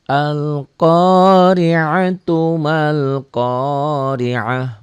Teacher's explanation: Disambung al-qari'atu mal qari'ah. Ma-nya matobi'i tapi tidak dibaca panjang karena ketemu alif lam qamariyah atau disebut juga idhar qamari ya.